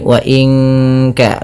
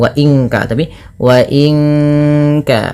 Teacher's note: Nun mati bertemu kaf, suaranya disamarkan ke kaf ya, terdengar bunyi wa inka langsung kepada makhraj huruf ka yang dimana kaf makhrajnya pangkal lidah kita, di pangkal lidah, maka bukan wa inka tapi wa inka.